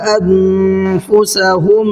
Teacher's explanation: انفسہم، انفسہم کے اندر نون ساکن کے بعد میں فا ہے جو حروف اخفا میں سے ایک حرف ہے فا، تو یہاں نون کی آواز کو تھوڑا سا ناک میں روک کر کے پڑھیں گے